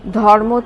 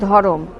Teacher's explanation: যেমন ধর্ম থেকে ধরম, ধ প্লাস অ প্লাস র প্লাস ম প্লাস অ, ধ প্লাস অ প্লাস র প্লাস অ প্লাস ম প্লাস অ। ধর্ম শব্দটি র রেফ হয়ে ময়ের সঙ্গে যুক্ত আছে। র ও ময়ের মাঝে কোনো স্বরধ্বনি নেই। সহজ উচ্চারণের উদ্দেশ্যে ধর্ম যখন ভেঙে ধরম হলো, তখন র ও ময়ের মাঝে এলো অস্বরধ্বনি।